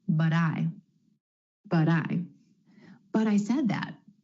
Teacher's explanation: instead of that true T at the end of the word but try the flap T · A recap on flap T, or the D sound. You're going to hear this quick D sound when the T comes between two vowel sounds, whether that's within a word or in between two words.